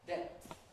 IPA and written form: depθ (depth)